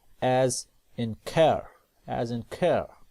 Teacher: a little bit lifted in the front of the mouth then the tongue relaxed back into the neutral uh schwa sound position and the lips become flopping and loose